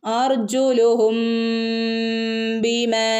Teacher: ആ മീമിനെ മറച്ചുപിടിച്ച് മണിച്ച് ഓതണം